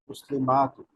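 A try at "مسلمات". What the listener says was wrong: মাতে আর একটু টানেন। মুসলিমাতুন। মানসুব বা মাজরুরের আলামত হলো আতুনটা আতিন হয়ে যাবে।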